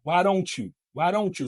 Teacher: the T goes in front of the Y sound gives us the CH